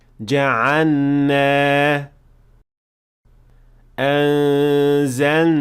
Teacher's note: The third mistake is assimilating lam into noon. And this happens when lam is followed by noon.